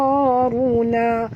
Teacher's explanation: Absaruna, sa kena tebal, tuan-tuan, kena sad adalah termasuk huruf isti'la, huruf tebal